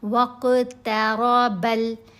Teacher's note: ٹھیک ہے، ہاں نپی، دوبارہ میں نے اس کو پڑھا، اور یہاں قاف کے اوپر ہم نے قلقلہ کرنا ہے، تا کی آواز باریک آواز ہے اور را کے اوپر زبر ہے، را کو یہاں ہم موٹا پڑھیں گے